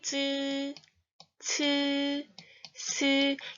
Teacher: 혀 끝이 윗잇몸 뒤에 붙였다 떼면서 마찰하는 소리예요. 설첨홈 혀 끝의 뒷소리라고 해서 혀를 이제 말아 올려서 말아 올려서 낸 소리를 설첨홈이라고 합니다.